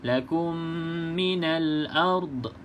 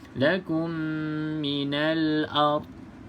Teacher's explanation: pastikan huruf dad ni tidak ada lantunan